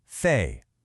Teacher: It's a stop. But for they, your tongue is between your teeth and the air keeps flowing with that buzz.